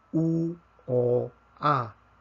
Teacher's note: U tenemos la boca casi cerrada, pero con A tenemos la boca abierta. Entonces tenemos vocales abiertas y vocales cerradas.